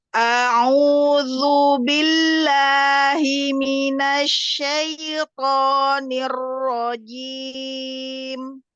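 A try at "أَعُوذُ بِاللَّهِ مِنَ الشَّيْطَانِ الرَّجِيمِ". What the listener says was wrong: Sudah bagus, cuman nanti berlatih lagi di ro. Jangan pakai bibir karena ro bukan huruf bibir. Hir. Iya, hir.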